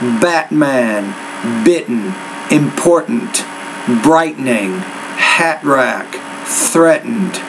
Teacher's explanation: focus on the glottal stop for example in the words